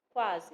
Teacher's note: Quando a gente fala quase, né, a gente pronuncia o U e o A. Mas o U, se você observar bem, o U, ele é falado bem mais rápido, né? Quase. A gente quase não escuta o sonzinho da vogal U. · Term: semivogal